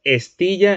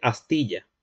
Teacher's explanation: la E es de la serie anterior, la semicerrada anterior. Y fíjate que la A es abierta, abierta central. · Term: vacilación de vocales átonas